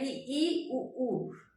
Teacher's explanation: तो संवृद्ध का मतलब बंद है। इ और उ ऊ का हम उच्चारण कर रहे हैं। इ ई उ ऊ। तो हमारा मुंह क्या है? बंद है। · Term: समृद्ध